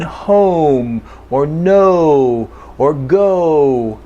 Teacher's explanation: then we have what we call long oh and it's oh there's some movement